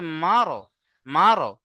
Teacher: পুর করে, মুখটা গোল করে পড়তে হয়। তাহলে মিম র জাবার মারো, মারো, মুখটা গোল হবে, মারো।